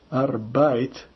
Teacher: Se pronuncia arbeit, o ei dá ai